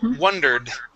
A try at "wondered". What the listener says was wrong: Give me a D at the very end.